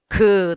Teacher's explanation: 공기의 흐름을 일단 막았다가 터트리면서 내는 소리 보이십니까? 여러분 파열, 하수구 파열되는 소리예요. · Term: 파열음